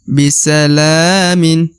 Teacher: huruf la dibaca Dua harakat karena di atasnya terdapat Alif kecil